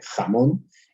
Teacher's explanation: ese fonema velar fricativo, el que pronuncio yo aquí en la garganta, eso que casi raspa